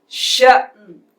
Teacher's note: اب ہم چلتے ہیں اگلے حرف کی طرف، شین حمزہ زبر ش، نون دو پیش نون، شأنن، شین کے ساتھ حمزہ ساکن ہے اس لیے یہاں پر جھٹکے سے پڑھا جائے گا، شأنن، وقف شأن، ہلکی سی نون کی آواز آئے گی، غنہ نہیں کیا جائے گا